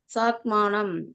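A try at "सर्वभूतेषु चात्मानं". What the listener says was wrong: சா சொல்லாதே சொன்னேனே, சாத்து சொல்லுங்க. சா சா முன்னாடி ஒரு இச்சு சேர்த்துக்குவோம். சாத்மானம்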